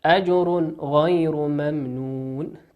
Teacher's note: تنوين أتى بعده حرف الغين، والغين من حروف الإظهار فنظهره كما هو